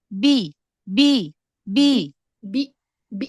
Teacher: Ba Itu dia punya sifat jahar jangan dialirkan nafasnya punya sifat syiddah jangan dialirkan suaranya jadi fokuskan ke makhraj huruf ba jangan ada dorongan dari tenggorokan